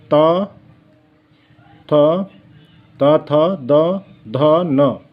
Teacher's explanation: त थ त थ द ध न यह दंत व्यंजन कहलाते हैं